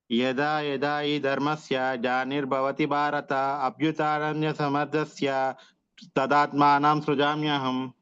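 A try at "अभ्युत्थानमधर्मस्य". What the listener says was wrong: Third లైన్ పోయింది ప్రభుజీ. అభ్యుత్థానమధర్మస్య. అభ్యుత్థానమధర్మస్య.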